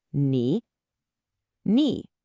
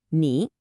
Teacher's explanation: Imagine your voice just dipping down and then scooping right back up. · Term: third tone